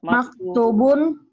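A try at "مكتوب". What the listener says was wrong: Panjang tuhnya. Maktubun.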